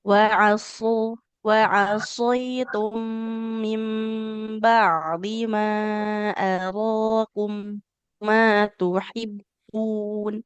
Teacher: huruf sodnya harus tebal. Huruf yang diucapkan dengan posisi pangkal lidahnya yang naik.